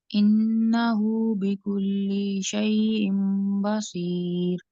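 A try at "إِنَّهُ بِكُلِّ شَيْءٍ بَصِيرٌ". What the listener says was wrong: लाम फिर लंबा हो गया बिकुल्ली का, दोबारा पढ़िए।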